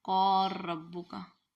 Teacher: लाम का रॉ में इदगाम हो रहा है, सूसी का इदगाम है। वाइज कौर रब्बू का, कौर रब्बू का मुदगम ड्रॉप हो जाएगा, मुदगम फी इसके अंदर रॉ के अंदर उसको लगा देंगे।